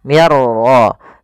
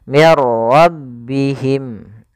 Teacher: masukkan nunnya kepada huruf ra sehingga suara nunnya hilang, langsung terbaca dengan jelas suara ra-nya. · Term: idgham bila gunnah